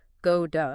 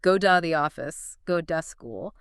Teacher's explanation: >> Yes, because the T is trapped between two vowel sounds, the tongue doesn't fully stop the air flow to create a hard T. Instead, it just briefly taps the roof of the mouth. So, go to softens dramatically and becomes go da. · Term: alveolar tap